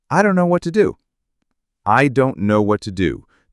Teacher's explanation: The what to becomes whata. The intonation would probably fall at the end.